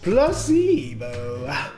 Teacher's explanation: The stress is on the middle syllable.